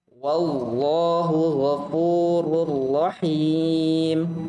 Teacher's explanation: Tebalkan lagi lamnya pada lafal jalal Allah.